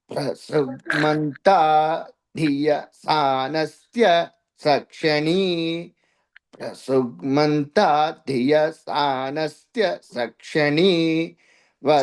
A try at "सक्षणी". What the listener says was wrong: సక్షణి దీర్ఘం లేదండి. సక్షణి వరేభిర్వరాగుం అభిషుప్రసీదత. లేదండి, సక్షణి వరేభిర్వరాగుం